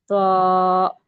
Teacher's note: ہم تو کو موٹا اور کھینچ کے پڑھیں گے، اونچا پڑھیں گے